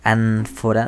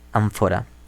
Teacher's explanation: Esto ocurre porque preparamos la lengua para producir la F. En vez de decir ánfora, decimos ánfora con los labios, no con la lengua.